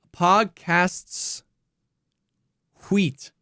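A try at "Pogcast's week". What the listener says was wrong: Well, you put the wrong emphasis on the wrong syllable,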